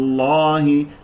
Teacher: جاء مفتوح قبل اسم الجلال قبل اسم الجلال الله تفخم اللام